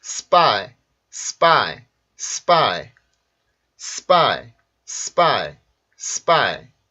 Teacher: S 발음 뒤에 있는 P 발음이 파이 발음이 아니라 빠처럼 바뀌게 돼요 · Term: 된소리